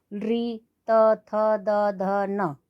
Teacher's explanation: ठीक है, तो ली तुलसा नाम दंत्य, ली तुलसा नाम दंत्य, इनका उच्चारण स्थान दांतों से होगा। जब हम इनका उच्चारण वर्णों को बोलेंगे तो बोलते समय हमारी जो जिह्वा है दांतों को स्पर्श करेगी।